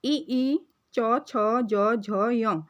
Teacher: ई और च वर्ग जो है वह तालव्य से उच्चारित होते हैं।